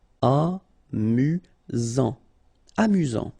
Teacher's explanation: Amusant, final T not pronounced. You've got only one S here between the vowels, so it's really this Z sound.